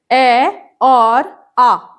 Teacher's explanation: ऐसे स्वर जिनकी ध्वनि कंठ से निकलती है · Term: कंठ्य